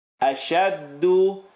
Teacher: Bring your tongue lower. If you're saying do, it's going to the gums. Bring it down lower to the teeth.